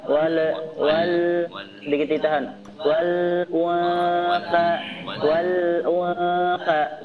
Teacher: Perhatikan lamnya enggak boleh dipantulkan. Wal wal sedikit ditahan. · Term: Alif lam al-qamariyah